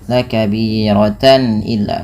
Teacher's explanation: suara tannya dibaca dengan jelas karena adanya tanwin bertemu dengan huruf hamzah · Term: izhar halqi